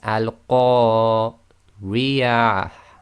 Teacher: you'll hear a slight breath, a slight ha at the end coming from the bottom of the throat. So again, it's al-Qariyah, and you'll hear but very, very soft. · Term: TaaMarBooTah